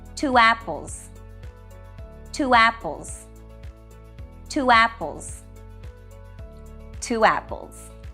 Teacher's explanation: the next word starts with a vowel sound when this happens either a w sound W as in wall is used to connect the two words or a y sound y as in yell here are some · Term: vowel to vowel linking